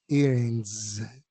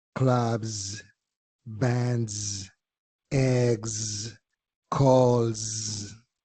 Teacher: Más que una S, es como si fuera una Z vibrada.